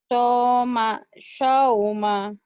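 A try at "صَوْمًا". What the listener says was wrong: Lumayan, masih ada tapi masih ada angin sedikit ya. Anginnya pelan aja. Soma, sauma. Soma, sauma.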